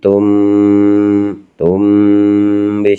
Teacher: ada mim sukun bertemu dengan huruf ba, cara membaca tum bi, samar-samar ya, hurufnya cuma satu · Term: ikhfa syafawi